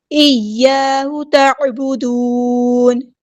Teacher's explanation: یا ہمارا تشدید والا ہے اور الف مد آیا تو مد اصلی کریں گے